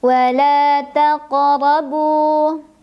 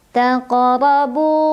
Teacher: Ra dibunyikan secara tafkhim karena ra berbaris dan barisnya di atas, maka bacanya tebal.